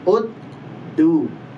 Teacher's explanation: Pangkal gigi seri atas, bukan di langit-langitnya, tapi di pangkal gigi serinya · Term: makhrajnya huruf dal